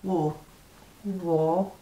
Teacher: But there's no R. War. You don't say the R in war.